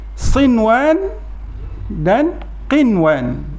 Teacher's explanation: nun mati bertemu dengan huruf waw tu patutnya ada dengung. Dia tak dengung. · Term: izhar mutlak